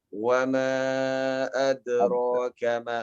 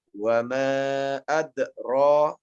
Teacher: Kalau kita baca wa ma adraka ma, lihat ini mengalir terus. Akan tetapi kalau kita baca wa ma adra, nafas terputus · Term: qalqalah sughra